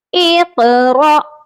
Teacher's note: یہاں پر را کے ساتھ حمزہ ہے، الف نہیں ہے، اسی لیے یہاں پر جھٹکا دے کر پڑھا جائے گا۔